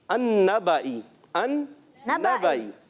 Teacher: अन्नबाई, अन्नबाई। तो 2 नून, पहला नून दूसरे नून में मिल गया और इसलिए नून मुशद्दद हो गया